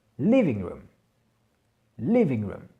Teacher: l'accentuation est sur la première syllabe, living room, et quand il y a une accentuation comme ça, on accentue principalement forcément sur la syllabe qui est accentuée, et puis le reste du mot passe pas forcément sous silence, mais est bien moins accentué.